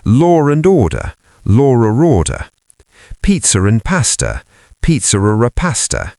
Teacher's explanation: We sometimes add an R sound between two vowels, even when there's no R in the spelling. This avoids two vowel sounds crashing together. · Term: Intrusive R